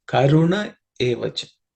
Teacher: Karunaha. So here the visarga is dropped because of sandhi.